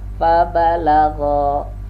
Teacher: kalau gha makhrajnya adalah huruf tenggorokan bagian atas.